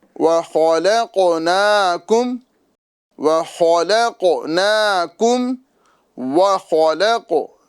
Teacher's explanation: ख को भी पुर करना है और कौफ को भी पुर करना है। · خا کو بھی پر کرنا ہے اور قاف کو بھی پر کرنا ہے